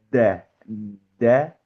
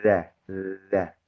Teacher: antara huruf dal dan huruf zal itu sama-sama ujung lidah itu menempel pada gigi seri atas, tetapi huruf dal itu kuat, tertahan. Kalau huruf zal itu lebih lebih kendor